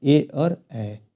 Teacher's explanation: कंठ तालव्य है कंठ और ताल को मिलाकर बोला जाता है